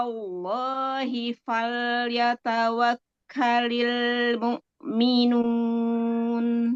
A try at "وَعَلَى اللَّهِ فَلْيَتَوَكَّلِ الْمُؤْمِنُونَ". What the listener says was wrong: Sekarang lafdzul jalalanya jangan dinaber. Wa 'alallahi, wa 'alallahi. tekan suaranya ke bawah kayak tadi, lamnya bagus. Jadi lafdzul jalalanya jangan dinaber ya.